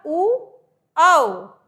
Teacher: हमारे ओठों की स्थिति कैसी हो गई गोल हो गई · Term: ओष